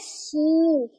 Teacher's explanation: वस जबान जब बिल मुकाबिल ऊपर के तालू से लगे तो अदा होता है शीन। हमारी जबान जो सेंटर है वो ऊपर तालू को टच करती है